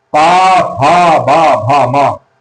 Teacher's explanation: पा, फा, बा, भा, मा ये ओष्ठ होते हैं, इनका उच्चारण ओष्ठ की सहायता से होता है।